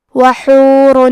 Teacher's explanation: ہم یہاں تنوین ظاہر کریں گے اور اسے نون ساکن پڑھیں گے اور بغیر غنہ سے یہ حکم کو ادا کریں گے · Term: اظہار